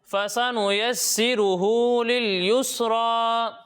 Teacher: یہاں پر ہا کو بھی کھینچ کر پڑھیں گے اور آخر میں را کو بھی ایک الف کے برابر کھینچ کر پڑھیں گے